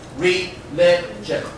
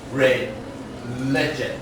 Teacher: The stress on the second syllable.